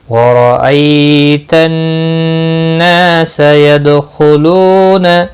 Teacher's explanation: را زبر کی وجہ سے پر پڑھا جائے گا، یا لین ہے، تھوڑا نرمی سے کھینچ کر ادا کریں گے